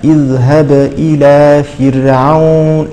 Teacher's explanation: لم تقلقلي جيدا هذه الباء